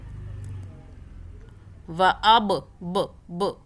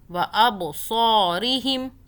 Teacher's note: با پہ قلقلہ کریں، جھٹکا دیں. وَأَبْصَارِهِمْ، سو پڑھنا ہے، سا نہیں پڑھنا.